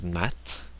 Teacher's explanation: the soft sign softens a consonant like in the word mat it makes the t very soft at the end